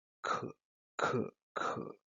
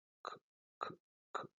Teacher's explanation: en el caso del inglés, esta plosión también es más aspirada. Entonces, por ejemplo, en el inglés van a pronunciar este sonido como k, k, k, mientras que en español es mucho más leve y se pronuncia como k, k, k.